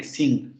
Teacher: el cierre de la cavidad oral se da en la zona del velo del paladar, en la zona de atrás de la boca, y el aire sigue saliendo por la nariz. Pero el cierre se da en la parte de atrás, pero sigue siendo una vocal, una consonante nasal.